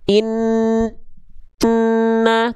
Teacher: Suaranya betul-betul masuk hidung semua. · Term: dengung